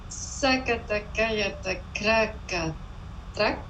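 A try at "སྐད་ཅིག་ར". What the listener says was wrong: Alors, c'est mieux si tu dis rata plutôt qu'yata. Mais bon, c'est un sakataka rata et non pas yata.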